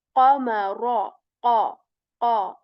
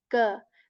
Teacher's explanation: The sound is more clear, here more clear in terms of, the way the back part of the tongue touches the soft palate with strength. So that is like a qa, heavy clear sound of qaf.